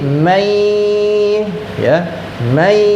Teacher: Jadi dimasukkan dan didengungkan bacanya menjadi may · Yang terjadi adalah suara nun mati dimasukkan ke huruf ya. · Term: idgham bighunah